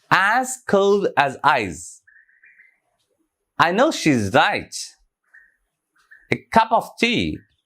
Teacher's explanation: Like unstressed, stressed, unstressed, and stressed.